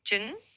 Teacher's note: In Southern Vietnamese, you'd say trứng for egg. So it's got a bit of a soft tr sound at the start and kind of a sound at the end.